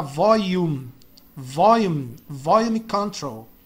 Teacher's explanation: Esse L aqui da palavra volume, você pronuncia como um I praticamente